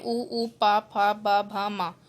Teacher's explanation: ओष्ठे दोनों होठों से बोले जाते हैं